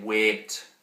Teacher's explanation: that e, it's a higher front vowel. That's basically what this is supposed to represent.